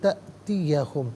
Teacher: حمزہ ساکن ہے، اسے جھٹکے کے ساتھ پڑھیں گے